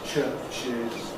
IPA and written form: ˈʧɜːʧɪz (churches)